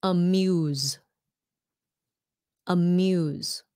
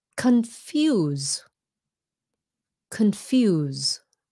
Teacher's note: the E turns the U into a long vowel amuse sounds like a z